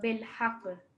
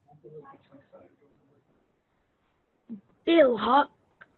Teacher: Just vibrate the sound a little bit because it's going to take a jazm or a sukoon.